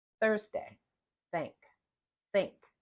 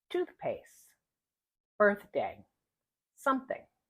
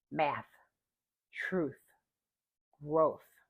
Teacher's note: the unvoiced th words in the initial medial and final positions